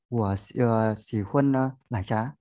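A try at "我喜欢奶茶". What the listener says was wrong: À, xỉ khoan nhé, đừng đọc xỉ khuân, xỉ khoan.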